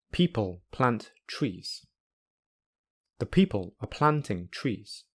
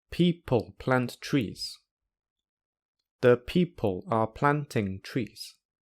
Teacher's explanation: Firstly, with a normal English rhythm, and secondly, with a Chinese-style rhythm. In other words, each syllable will be the same length.